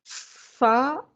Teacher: اوپر والے 2 دانتوں کے کنارے جب نچلے والے ہونٹ کے اندرونی تر حصے سے لگے تو فا ادا ہوتا ہے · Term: فا کا مخرج